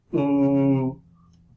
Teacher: So it's like an U, but with your lips spread as you were smiling. So you go ooh.